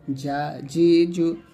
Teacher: জিম জিব্বার মধ্যখান, তার বরাবর উপরে তালু সঙ্গে লাগাবেন